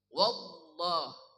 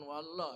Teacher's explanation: Lam pada lafaz Allah dibaca sangat tebal.